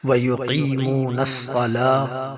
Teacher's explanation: 1 الف کے برابر لام کو کھینچیں گے کیونکہ اس کے اوپر کھڑی زبر ہے